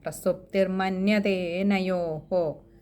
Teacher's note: പ്രസുപ്പ്തിർമന്യതേനയോഹോ അവിടെ മ കൂട്ടക്ഷരമാണ് അതുപോലെ ദേ ഏനയോഹോ അവിടെ ഒരു എകാരം നീട്ടിയെടുക്കുക പിന്നെ ഒരു വിസർഗം ഉള്ളതുകൊണ്ട് തന്നെ പകുതി ഒരു ഹകാരം കൊണ്ടുവന്നു തന്നെ നിർത്തുക